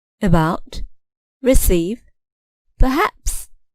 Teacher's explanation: the final syllable is stressed